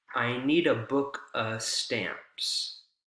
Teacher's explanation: preposition of uh is reduced to just uh